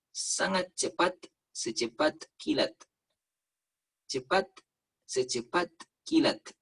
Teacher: Itu orang Arab kalau nyebut huruf T di ujung pasti pecah.